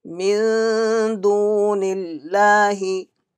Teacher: Kasra came before Lam of Allah will be read with empty mouth.